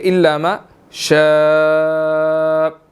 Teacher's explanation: اس کے اوپر بڑی مد ہے, 4 to 5 سیکنڈز ہم نے اس کو کھینچ کر پڑھنا ہے